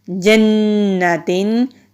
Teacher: نون پہ غنہ ہوگا، مشدد والا حرف ہے نون، تو نون جب بھی مشدد ہو یہاں پر ہم غنہ کریں گے